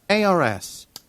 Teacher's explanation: 모음 플러스 R 요게 있으면 요거는 silent예요. 그래서 R 사운드가 그렇게 나지는 않습니다. 약간 어나 의에 가깝게 좀 발음이 되는 경향이 있어요. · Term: silent R